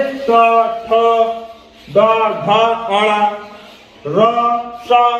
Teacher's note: मूर्धा में जो हमारी जीभ होती है, जैसे यहाँ पे ये जब ऊपर के अग्र भाग को जो है टच करती है, मूर्धा में क्या होता है, हमारी जीभ पीछे के भाग को, जो टंग यहाँ पे लटकती रहती है, उसको टच करती है। जिन वर्णों का उच्चारण करते समय हमारी जो जीभ है वो पीछे के भाग को टच करती है, वही जो है मूर्धा कहलाती है।